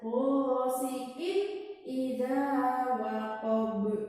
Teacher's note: Di sini juga ada tanwin ketemu alif. Itu termasuk apa? Idhar. Itu harus dibaca jelas.